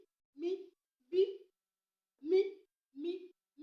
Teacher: Ìgbà tí a pe mí, ètè méjèèjì pàdé.